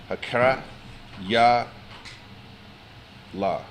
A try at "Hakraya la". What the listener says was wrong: So connect the ya and the la. You said the word correctly. Just connect.